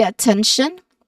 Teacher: Now, you start with a schwa sound, and then second syllable has a short e sound, 10, and then last syllable is tion.